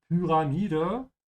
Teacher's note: The Y here is pronounced with an U sound, so stretch your tongue forward to say pyra, and the A is open, so not ra, yeah, ra.